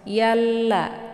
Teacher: Jadi alif lam syamsiyah ini juga dinamakan dengan idgham syamsiyah karena cara bacanya memasukkan yalla ya. Jadi alif lam ini tidak lagi dibaca, langsung ya-nya dileburkan ke dalam huruf lam.